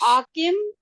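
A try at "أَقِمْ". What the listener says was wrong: اقیم, آکم نہیں ہے, اقیم ہے. زبر ہے صرف. دیکھیں اقیم الصلاۃ سے یاد رکھیں نا, تو اقیم زبر ہے نا صرف.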